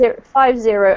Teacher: and the emphasis comes on the first syllable